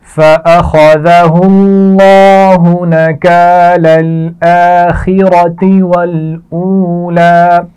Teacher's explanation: نکال الآخرۃ، یہ دونوں الفاظ ملا کر پڑھے جائیں گے. اس میں خا کو موٹا پڑا جائے گا، را کو موٹا پڑا جائے گا